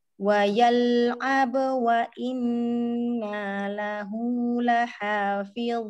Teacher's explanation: lamnya sama seperti ro juga punya bainiyah, jadi dia mengalir juga sebagian suaranya